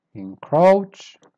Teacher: Start weak and then you go up